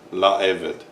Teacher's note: the hey disappears, but only the vowel remains to show that this is definite